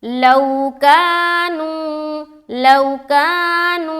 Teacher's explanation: लौ को जल्द, कानू को खींचना है